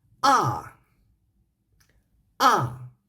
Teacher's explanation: So the fourth tone is just a falling tone. It sounds like you are angry or say some sentence intonation in this way.